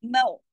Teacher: ماؤ، اس کو سمپل میں نہیں، ماؤ پڑھنے کے لیے زبان اوپر اٹھے گی، ٹھیک ہے، منہ بھر کے پڑھا جائے گا